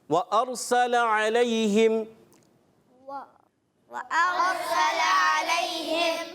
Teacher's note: اس میں بھی ہم دیکھیں را کو پر کریں گے، را ساکن سے پہلے زبر آیا تو اس لیے پر ہو جائے گا. علیہم یا لین نرمی سے ادا کریں گے، کھینچیں گے نہیں.